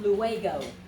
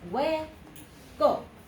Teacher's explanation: so again there's a diphthong here this is not a three syllable word this is not luego okay it is way go okay that's